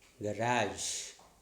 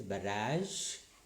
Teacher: We used to say this one as garage, we say z, but it is j